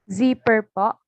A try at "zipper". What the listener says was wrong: Okay, zipper. You don't say per because this schwa. You just make the sound p and the r, per, zipper, right? If it's British, zipper, right? You stop here, zipper.